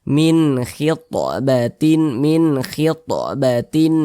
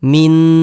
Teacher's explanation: kita baca jelas huruf nunnya kita baca jelas Min begitu kemudian tidak didengungkan tidak digunahkan jadi pendek saja bacanya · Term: izhar halqi